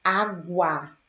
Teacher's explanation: Na palavra água, eu ouço o fonema do G, G, e eu ouço o fonema do U. Então, ele não é dígrafo, pois ele apresenta dois sons.